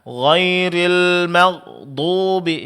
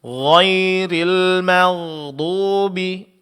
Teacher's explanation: Namun ada sedikit pengucapan huruf ghain sukun di sini, suara jangan terputus dan jangan terlalu ditekan ya Pak ya. Karena huruf ghain sifatnya ada rakhawa, yaitu pengucapan huruf yang disertai suara terlepas. Jadi bukan tertahan. Kalau Pak tekan seolah-olah tertahan.